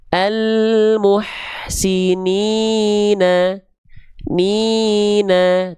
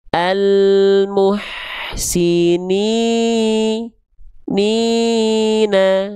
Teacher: Cukup diayunkan dua kali ayun saja karena dua harakat ayunkan dua kali ayun. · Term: mad thai